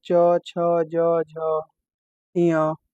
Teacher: तालुब्य, तालु द्वारा मुंह के भीतर की ऊपरी छत पर अलग भाग